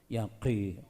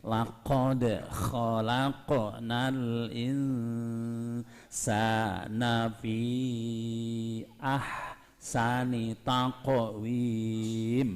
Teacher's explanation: qi tetap mencu ya qi karena dia huruf kandel, huruf mufakham